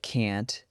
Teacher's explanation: But, avoiding it actually makes cannot sound too heavy. So, practice can't as a single short word that ends in a tiny block of air